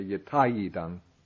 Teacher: The E becomes ya when preceding another vowel sound.